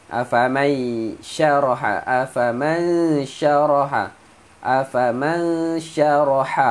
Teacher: nun mati bertemu shin, dengung, sembunyikan bunyi nun